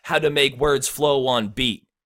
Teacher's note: the how and the make are stressed syllables